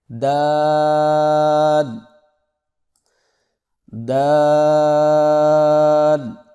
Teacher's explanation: زبان کی نوک کو سامنے والے اوپر کے 2 دانتوں کی جڑ سے لگا کر باریک آواز میں پڑھیں، یعنی دال، میرے ساتھ پڑھیں، دال دال۔